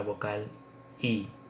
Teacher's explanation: es la misma vocal que encontramos en el español que es una vocal cerrada oral cuya producción se lleva a cabo con los labios estirados